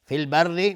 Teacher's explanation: فی البر الف لام قمری است و را ترقیق است چون کسره داره